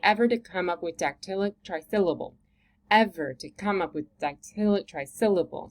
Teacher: So the ev, the come, the dact, and the sil, those are all stronger.